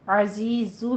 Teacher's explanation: زائے کے اوپر سیٹی کی آواز لائیں گے